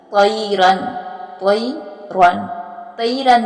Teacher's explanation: طوا جو ہے اس کو بھی پر اور موٹا پڑھیں گے اور را کو بھی پر اور موٹا ادا کریں گے